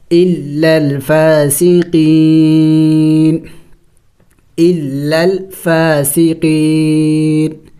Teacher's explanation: وقف میں اس نون کو سائلنٹ کریں گے یعنی ساکن کر دیں گے